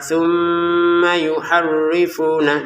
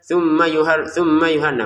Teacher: Mim tasdidnya kita dengungkan dua harakat.